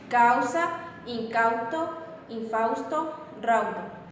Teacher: una vocal precedente en una posición de una u cuya tensión apenas llega a producirse es interrumpida por una consonante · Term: u semivocal